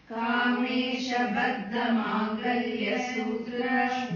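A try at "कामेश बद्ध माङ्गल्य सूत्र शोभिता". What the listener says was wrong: Don't say stop it with Mangalya. Mangalya Sutra is one word. Mangalya Sutra Shobhita. Kamesha Baddha. When you recite it together, Kamesha Baddha Mangalya Sutra Shobhita only, no?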